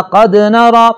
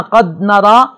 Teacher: جزم ہو تو جھٹکا دے کے پڑھا جاتا ہے